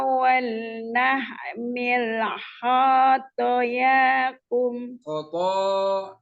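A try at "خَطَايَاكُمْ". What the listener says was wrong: Khonya pendek.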